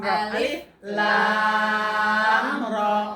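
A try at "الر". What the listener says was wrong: lamnya jangan ditekan juga. Jangan ditekan,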